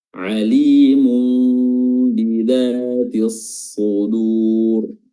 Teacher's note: huruf dzal yang makhrajnya itu ujung lidah bertemu dengan gigi seri bawah, gigi seri atas dan bawah, ya, diapit